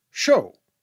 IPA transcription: ʃo: